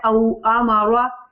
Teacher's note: रॉ को मोटा पढ़ेंगे ना